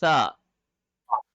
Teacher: سا میں زبان کی نوک اوپر کے دانت کے کنارے پہ لگے گی۔